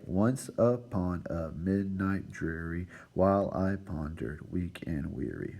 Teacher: this pattern uses a stressed syllable followed by an unstressed syllable